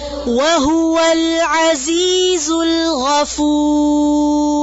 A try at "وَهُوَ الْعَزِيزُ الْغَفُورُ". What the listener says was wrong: لام ساکن کو دھیان سے پڑھیں پھر سے